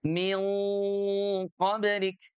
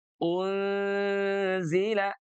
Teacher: Jadi huruf nunnya nanti tanwinnya kalau ketemu dengan huruf qaf itu dibaca tebal berbanding kalau nunnya bertemu dengan zai.